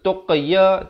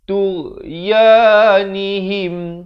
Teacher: jangan berikan lantunan kerana ghain bukan huruf qalqalah.